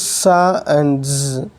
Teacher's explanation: narrowing the passage of the air at the alveolar ridge and forcing the air out through this passage